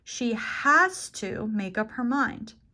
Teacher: I'm emphasizing has to because I want it to be strong and forceful that it's something important that she does. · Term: strong form